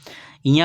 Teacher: ञ का उच्चारण तालु के साथ नाक से होगा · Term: नासिक व्यंजन